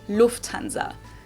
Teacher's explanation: English people usually say Lanza but in German we say Lanza so the emphasis on the first syllable · So the emphasis is on the first syllable